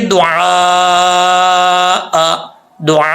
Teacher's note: 2 ज़बर हो तो थोड़ा सा 1 अलिफ की मिकदार इसको खींचेंगे